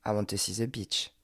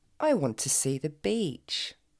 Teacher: c'est la différence entre un i court, qui n'est pas vraiment un i, et un i long.